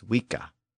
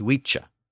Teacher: in Old English the sound of the letter c changed when it appeared before a front vowel like e it shifted from its original k sound to the CH sound